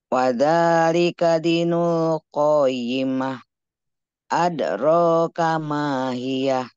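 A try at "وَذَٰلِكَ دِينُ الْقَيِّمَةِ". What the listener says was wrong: Ini ada apa di sana? Ada mat enggak? Nah, ada. Jadi dibaca panjang atau pendek? Panjang ya. dibaca panjang. Wadzalika dinul. Jadi tidak wadzalika dinul qoi. Tidak. dibaca panjang.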